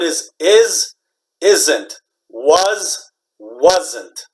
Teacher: these s's we pronounce like z, z